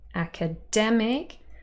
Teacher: Here we've got ac-a-dem-ic, 4 syllables. The main stress is on the third syllable, dem, academic, But the first syllable actually carries secondary stress. It's not as quiet and unstressed as the second, which is just a schwa, and the last, which is just ik.